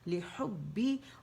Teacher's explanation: ہا کے مخرج پہ وسط الحلق پہ جائیں گے